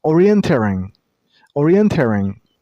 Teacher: the last syllable isn't pronounced as ing. It's eng. So, orienteering.